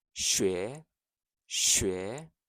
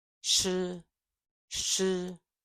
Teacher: sh is tongue further back in the mouth